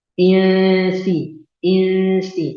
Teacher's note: Huruf sin tidak punya sifat isti'la, maka tidak tebal. Biasa saja.